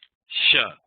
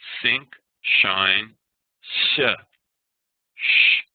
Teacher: the S with an acute accent is between s in sync and Sh in shine